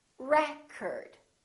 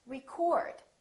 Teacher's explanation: If it's a noun, it's pronounced as record. The first syllable is stressed.